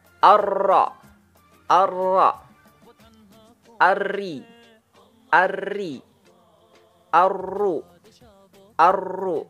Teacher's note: pada posisi gusi atas lebih dalam sedikit dari makhraj nun. Keluar darinya huruf ra.